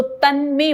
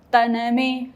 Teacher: अब देखिए न में अ नहीं है तो तन्मे बोला, अगर न में अ होता तो कैसे बोलता, तनमे, न में अ, तनमे।